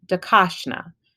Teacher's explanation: there is an emphasis on the second syllable